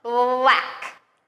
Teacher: The B is very soft, and then the L is stronger. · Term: L blends